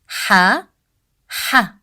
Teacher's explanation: the sound of ha comes from the middle part of throat we don't say it as the english sound ha as in